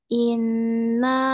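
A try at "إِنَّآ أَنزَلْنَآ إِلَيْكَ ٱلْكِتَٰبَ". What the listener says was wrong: Musadada, nun musadada. Nah, musadada, jangan lupa.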